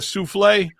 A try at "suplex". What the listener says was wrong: Suplex. X is, in wrestling, the X is pronounced.